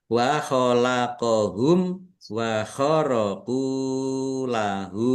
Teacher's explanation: Mim sukun bertemu dengan huruf wau. Bacaan izhar syafawi dibaca jelas. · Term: idhar safawi